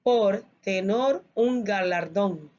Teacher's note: Esta palabra galardón aquí termina en una sílaba tónica, una palabra aguda, porque según la regla me dice que todas palabras agudas que terminen en N, S o vocal, se le marca el acento Entonces, esta palabra suena fuerte en la última sílaba, es una palabra aguda.